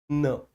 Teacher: ना को उच्चारित करने में क्या होगा कि जिह्वा हल्का सा मसूड़ों को छूने का स्पर्श करेगी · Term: वतस्य